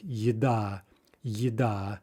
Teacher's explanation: it sounds more like ye in the initial position in a word